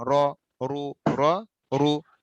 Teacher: রটা যদি জবর বিশিষ্ট হয় বা পেশ বিশিষ্ট হয় তখন রটাকে মোটা করে পড়তে হবে